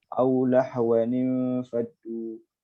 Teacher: tanwin bertemu dengan alif wasal, kita tambahkan nun, bariskan mari bawah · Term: iltiqat sakinain